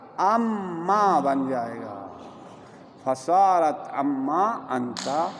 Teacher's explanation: اس لیے کہ نون اور میم قریب المخرج ہے، لہٰذا نون کو میم میں تبدیل کر دیا جائے گا، پھر میم کو میم میں ادغام کر دیا جائے گا، تو کیا بنے گا؟